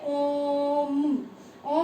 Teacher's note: ओम लंबा बोलते हैं ना हम, तो ये वाली जो साउंड है ये प्लुत स्वर की होती है